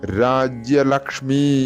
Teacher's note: വിസർഗം വിടലായിട്ട് അഹ എന്നുള്ളതിന്റെ പകുതിയായിട്ട് ഉച്ചരിക്കുന്നതാണ് നല്ലത്